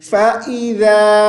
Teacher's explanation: ذال کو زا، فَإِذَا نہیں پڑھیں گے، ذال پہ زبان کو باہر